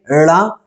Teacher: जैसे कि आप इनको उच्चारण करेंगे ड़ा तो आपकी जीभ पहले ऊपर जाएगी मूर्धा पर और उसको छुएगी, फिर उसके बाद तुरंत नीचे आएगी। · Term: उत्क्षिप्त वर्ण